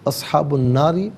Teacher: را کے نیچے زیر باریک پڑھا جائے گا، لیکن وف کی صورت میں را ساکن ہو جائے گا تو ما قبل نون پر زبر ہوگا تو وف کی صورت میں را ساکن کو پر کر کے پڑھا جائے گا۔